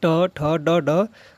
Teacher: ट ठ ड ड का उच्चार स्थान कहां से होता है मुर्धन्य से होता है